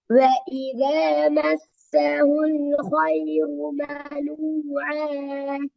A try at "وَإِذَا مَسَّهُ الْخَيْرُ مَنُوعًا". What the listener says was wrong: இப்ப ராட வல்லினம் தேவை. நீங்க இப்படிதான் ராக ஃபோக்கஸ் பண்ணணும். கத்தி ஓதுறதை விட முக்கியம் குறிப்பிட்ட எழுத்துக்களை ஆணித்தரமாக நிச்சயம் ஸ்ட்ராங்கா அந்த வல்லினத்துக்கு ட்ரை பண்ணி ஓதுது. அதோட அர்த்தம் தட்டி கத்தி பரட்டி ஓதுறது இல்ல, ரெண்டு வேற.